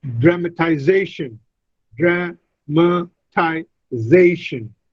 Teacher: And then when I add this suffix tion, it becomes dramatization, dramatization. The stress is on the fourth syllable.